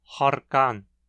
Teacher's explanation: quando o R do persa aparece antes de uma consoante surda, ele se torna uma vibrante alveolar surda